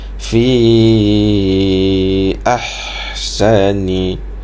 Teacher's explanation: Fi ahsani, jadi salah dekat situ, sebab tu dah jadi huruf ha, dia keluar daripada dada. Huruf ha ni kita kena tekan sedikit pada rongga kerongkong kita itu supaya dia menjadi lebih berat sikit bunyi dia. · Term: ha pedas